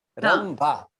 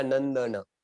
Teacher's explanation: रंभा में आपने अनुस्वार का क्या उच्चारण किया? म का